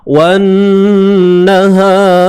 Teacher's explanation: Mulut tak payah muncung lah bila nak tebalkan ra ni. Sebab ra bukan huruf bibir. Jadi kita kena tebalkan ra tu, just angkat lidah kita tu, angkatkan bunyi dia.